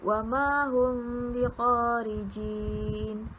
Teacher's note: Ianya berlaku apabila mim mati bertemu dengan huruf ba yang berbaris. Cara bacaannya pula adalah menyembunyikan bunyi mim sakinah beserta dengan dengung dengan kadar 2 harakat. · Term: ikhfa syafawi